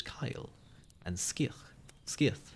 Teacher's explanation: as if spelled with a K but also then as now the Irish even had the hard sound before front vowels the C is pronounced like a K in venerable Irish words